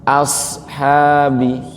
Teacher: Shadnya itu huruf sifatnya mengalir ya Bapak Ibu, atau bahasa tajwidnya rokhawah.